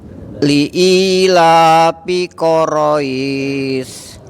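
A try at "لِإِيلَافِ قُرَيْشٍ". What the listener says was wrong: Fi Bapak. Agak dilebarin bibirnya. Fi. Bapak. Fi Quraisy.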